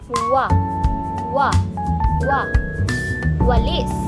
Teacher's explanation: ito ay madulas at mabilis na tunog. Parang patinig pero may katinig na katangian. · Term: glit